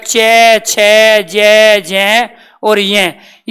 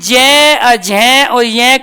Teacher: च और छ का जब हम उच्चारण करते हैं क्योंकि च वर्ग के अंदर जो वर्ण आएंगे हमारे च के अंदर आएगा चै ज झ और य आएंगे तो इसका जब हम च का छ का उच्चारण करते हैं तो कोई वाइब्रेशन पैदा नहीं है कोई कंपन नहीं होता लेकिन ज झ और य कहने पर वास्तव में वाइब्रेशन पैदा हो रहा है